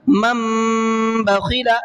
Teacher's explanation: اب یہ نون نہیں پڑھا جائے گا بلکہ یہ میم پڑھا جائے گا۔